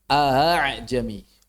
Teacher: yang namanya hamzah musahhalah itu adalah suara di antara hamzah dengan alif